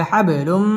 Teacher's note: বা কলকলার হরফ ধাক্কা দিয়ে পড়তে হবে